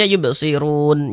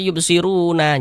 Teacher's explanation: kalau kita berhenti ya atau berwakaf tepat di huruf nun, huruf nunnya tuh kita sukunkan. Ini kita baca yubsirun.